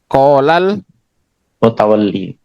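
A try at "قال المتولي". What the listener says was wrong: Iya, harus iyanya dibaca Pak.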